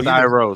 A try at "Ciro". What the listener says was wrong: I think he pronounced it Ciro Thompson. Supposed to be kind of like zero, but with an S. Ciro.